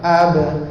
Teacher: ada lantunan ringan pada ba tu